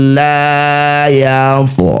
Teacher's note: Fathah diikuti alif ha disebut bacaan mad thabi'i. Panjangnya dua harakat saja. Jadi kalau berhenti di H, ha-nya dua harakat ya, jangan ikut layar.